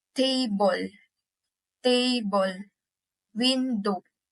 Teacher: Did you notice the emphasis is on the first syllable of the word? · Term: first syllable is stress